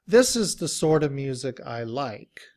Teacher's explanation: the t sound even sounds more like the d sound